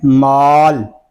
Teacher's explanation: مال کی میم کو ادا کرتے وقت ہماری آواز ناک میں نہیں جاتی